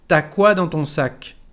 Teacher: cuando hablamos no decimos tu as, pero solamente ta. Tu as llega a ser ta.